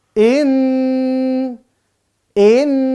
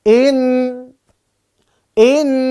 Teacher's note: ada tanda tasjidnya sama kayak Nun Nun bertasdid juga dia di rongga hidung